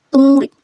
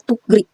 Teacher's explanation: Kapag ang G, if kasunod niya ay R, ay magiging NG sound.